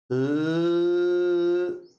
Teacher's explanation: जीभ तालु से चिपकती है ल और जैसे ही हम इसका उच्चारण करते हैं बोलते हैं तो तुरंत प्राणवायु जीभ के दोनों ओर से बाहर निकल जाएगी। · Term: पार्श्विक ध्वनि